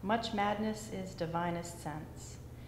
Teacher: It sounds to me like the first syllable is unstressed, second syllable is stressed, so it's iambic